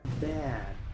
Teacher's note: Muchos pronuncian esta palabra bat o bad, pero aquí la A se pronuncia ea. La D no se pronuncia como una T. Casi no hace un sonido. La D se usa para parar el escape de aire. Así que esta palabra se pronuncia bad.